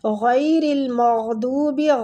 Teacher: غین بھی پور پڑھیں گے، غین پہ کلکلہ بھی نہیں ہونا چاہیے